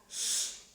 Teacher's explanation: while producing this sound, shh, vocal cords are not vibrating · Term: post alveolar voiceless fricative